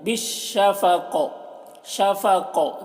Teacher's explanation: دیکھیے آواز قاف کی ٹکرا رہی ہے, اسی قلقلہ کہتے ہیں · قوف کو پور پڑھتے ہیں اور قلقلہ کرتے ہیں